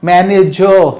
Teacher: Manager, means last R sound is never spoken in English countries or in English speaking countries, or English speaking people never pronounce the final R sound